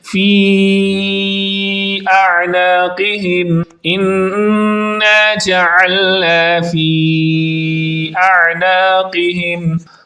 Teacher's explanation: عین کی آواز حلق کے درمیان والے حصے سے نکال کر پڑھنی ہے، اور اس کے بعد قوف دو نقطہ والا جو کہ ہمیشہ پر یعنی موٹی حالت میں تھک ساؤنڈ کے اندر پڑھا جاتا ہے، اس کو بھی آپ نے درست انداز میں پڑھنا ہے۔